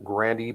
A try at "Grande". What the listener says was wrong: If I could, Mayor, you mispronounced his name as Gandy. There's no R.